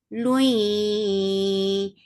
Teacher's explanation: idgham with gunna, so keeping the sound in your nose for a longer time.